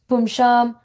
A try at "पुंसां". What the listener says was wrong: You're saying Sha sound, it's a Sa sound. Pum Sam.